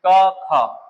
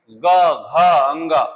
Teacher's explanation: तो यहाँ क ख कहने में उतनी ऐसा कंपन नहीं होगा, लेकिन जब कहेंगे ग घ अंग, ये जब बोलेंगे तो ये कंपन उत्पन्न होगा यहाँ पर। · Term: सघोष